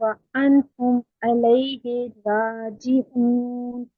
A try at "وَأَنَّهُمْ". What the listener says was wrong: جی وَأَنْهُمْ، وَأَنْهُمْ نہیں ہے، وَأَنَّهُمْ، یہ بھی أَنَّهُمْ. انہم کیا ہوگا، حمزہ زبر نون ان. یہاں پر مسٹیک ہو رہی ہے، زبر نہیں پڑھی جا رہی.